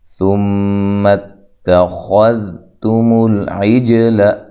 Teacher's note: میم مشدد پہ غنہ ضروری ہوتا ہے ، غنہ کی مقدار 1 الف ہوتی ہے۔ اچھا جی، اتخذتم